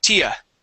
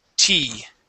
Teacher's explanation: even though there are 2 vowels together, okay, this would not be a diphthong, being 2 vowels like ia, ia. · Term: one vowel sound